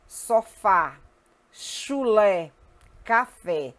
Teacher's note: o sinalzinho do acento agudo ele indica que a vogal tônica possui timbre aberto